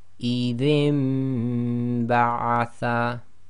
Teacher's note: So we've got Noon Saakin followed by the letter Ba, so we're doing Iqlaab. So we're changing the sound of the Noon Saakin to a Mim Saakin.